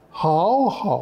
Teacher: 两个好在一起，第一个好就怎么样，要变成阳平声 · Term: 变调